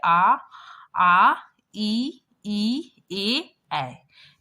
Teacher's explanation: इसमें क्या होता है कि उच्चारण में होठ गोल नहीं होता है